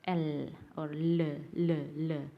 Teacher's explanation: the airstream flow around the side of tongue as the tip of the tongue makes contact with the middle of the alveolar ridge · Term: liquids